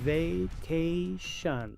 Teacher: La segunda a se pronuncia e la t se pronuncia como sh. La i se pronuncia normal.